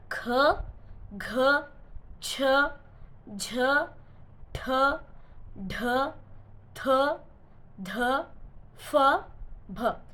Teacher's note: ಮಹಾಪ್ರಾಣ ಎಂದರೇನು? ಹೆಚ್ಚು ಉಸಿರಿನಿಂದ ಉಚ್ಚರಿಸಲ್ಪಡುವ ಅಕ್ಷರಗಳಿಗೆ ಮಹಾಪ್ರಾಣ ಎನ್ನುವರು